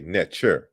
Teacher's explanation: in ancient Egyptian, the K sound is palatalized to the ch. So that's why we say netcher. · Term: palatalized K